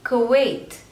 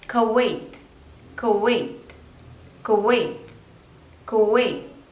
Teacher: Two syllables, ka and wait. So stress is on the second syllable.